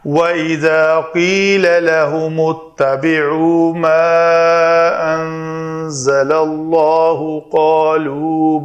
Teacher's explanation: لام اس میں جلالہ کے پہلے زبر کے ساتھ ہے، اس کو پر پڑھیں گے